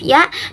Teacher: Mediopalatal tengah lidah ke langit-langit